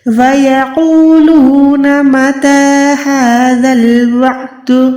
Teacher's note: ہا کو بھی سیم طریقے سے تا کی طرح لمبا کریں، کیونکہ ہا پہ بھی کھڑی زبر ہے